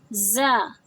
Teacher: زا تھوڑا بزرنگ ساؤنڈ، تھوڑا ہیوی ہوتا ہے۔ زا کی ادائیگی ہمارے اوپر اور نیچے کے دانت آپس میں ملا کر زبان کے دانتوں کے پیچھے ہلکی سی ٹچ ہوتی ہے، ہماری زبان دانتوں کے پیچھے ہلکی سی ٹچ ہوتی ہے تو ہم زا ادا کرتے ہیں۔